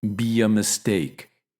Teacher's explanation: we put a helping Y sound before uh